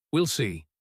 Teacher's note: The phrase we'll see is interesting because it almost always falls gently, calmly